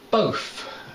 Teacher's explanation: most people in London or Essex, they do pronounce this th as an F